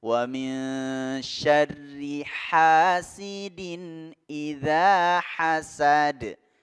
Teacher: H kecil lagi yang letaknya di tenggorokan bagian tengah